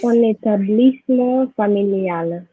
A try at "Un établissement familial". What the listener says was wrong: You need to remember not to stop after the un, because if you stop after the un, you will not be able to make the liaison, which is compulsory. The liaison is compulsory with articles like un, des. So you need to say un établissement.